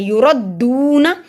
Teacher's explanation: और रॉ को मोटा पड़ा जाएगा, देखिए रॉ के ऊपर ज़बर है